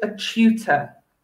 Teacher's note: so that's the tu sound pronounced chew